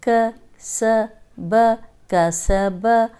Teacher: काफ ज़बर का, सीन ज़बर सा, कासा, बा ज़बर बा, कासा बा, कासा बा। ये सीन सीटी वाला है तो खुद ही सीटी की आवाज़ निकल आती है।